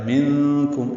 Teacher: منکم اخفا ہے، نون ساکن کے بعد کاف آنے کی وجہ سے